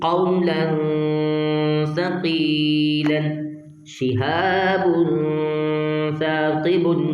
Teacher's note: تنوین کے بعد حرف اخفا میں سے سا تو غنہ کریں گے